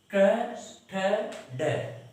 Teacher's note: च की बजाय ट का जब उच्चारण करते हैं तो हमारी जीभ थोड़ी सी और ऊपर चली जाती है। तो जहां से ये लाइन पूरी उच्चारित होती है, बोली जाती है, वहां ये से इस से का उच्चारण होता है। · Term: मूर्धन्य